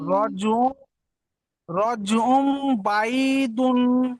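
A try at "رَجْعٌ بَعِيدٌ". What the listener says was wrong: মাশাআল্লাহ, সুন্দর পড়েছেন, আরো সুন্দর করে পড়বেন,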